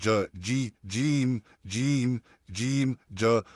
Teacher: तो उसी के ऊपर जो हमारा सख्त तालू है आ अपनी जुबान के दरमियाने हिस्से को उसके ऊपर सख्त तालू पे टच करेंगे और उससे फिर हमारा अदा होगा जीम